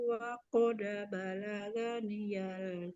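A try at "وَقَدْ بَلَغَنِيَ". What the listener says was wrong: Balaghoniyal. Wa qad balaghoniyal. balaga. Nah, huruf ghain itu tidak dibaca ga ya, tapi gho.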